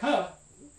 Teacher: That final X is actually standing in for two separate speech sounds in English. There's a voiceless velar stop